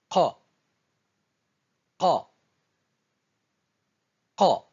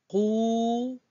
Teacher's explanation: Je bloque le passage de l'air et je libère brusquement, tout d'un coup.